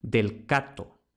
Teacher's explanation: la c no está entre dos vocales por tanto no puede sonorizar